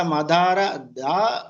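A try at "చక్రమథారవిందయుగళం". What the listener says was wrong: అథ అథ మదార కాదు అథ మీన్స్ లేటర్ ఆ తరువాత అథార విందన అథ అథ సెకండ్ థ.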